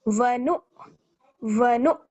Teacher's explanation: तो यहाँ पर हमें थोड़ा सा झटके के साथ पढ़ना होगा क्योंकि हमजा के ऊपर जज्म लगा हुआ है।